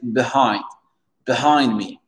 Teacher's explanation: vous mettez l'accent tonique sur le hind